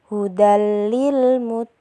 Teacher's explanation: ada huruf lam gimana huruf lam adalah termasuk huruf idgham bilaghunah cara membacanya adalah dengan masuk tidak mendengung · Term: idgham bila ghunnah